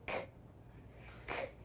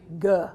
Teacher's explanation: All right, put your hand in front of your mouth and do the k. Feel that puff of air? Now do g. No air.